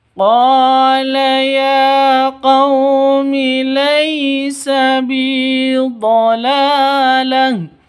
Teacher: qo memiliki panjang dua ketukan karena terdapat alif yang didahului oleh fathah. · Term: mad asli